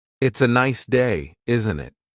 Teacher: The tone going up at the end tells the listener that you're asking a question.